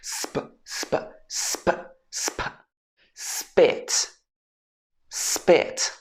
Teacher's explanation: So you will hear actually it doesn't sound like a full p sound, it sounds more like a b sound. It sounds more like spit.